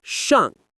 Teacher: High and sharp at the start, falling quickly. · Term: fourth tone